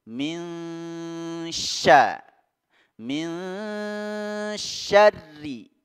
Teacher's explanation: Nun bertemu syin ya yang makhrajnya ada di lidah bagian tengah yang digesekkan ke langit-langit